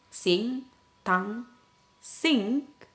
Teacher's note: Jadi udaranya keluar melalui nose, hidung. Yeah, so for the when we pronounce it, the passage is completely blocked by raising the back of the tongue to touch the soft plate.